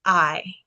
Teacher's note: So, uh, so the smooth breathing mark doesn't mean that the vowel itself is silent. What it means is you're not adding an h sound before it. So, if it had a rough breathing mark here, this would be pronounced with a ha, but it doesn't have it has the smooth breathing mark instead of the rough breathing mark.